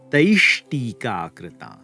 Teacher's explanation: The visarga after the aihi will turn into the retroflex shakara, making it taishtika krita.